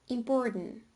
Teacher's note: elision of the voiceless alveolar plosive t after the alveolar nasal n